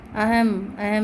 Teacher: संस्कृत के कुछ तत्सम शब्दों के अंत में अनुस्वार का प्रयोग म की ध्वनि उत्पन्न करता है, उसका उच्चारण म होता है, लेकिन इसको बिंदु के रूप में लिखा जाता है, अनुस्वार लिखा जाता है।